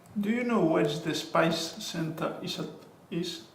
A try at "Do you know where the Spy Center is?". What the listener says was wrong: You've got an extra S here. Spy, spice. You've got an extra S in the first one, huh?